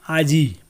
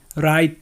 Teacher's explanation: যে স্থানে ইকার বা উকার উচ্চারণ হওয়ার কথা ছিল সেটা তার আগে উচ্চারণ হয়ে গেল, সেটা হচ্ছে অপিনিহিতি।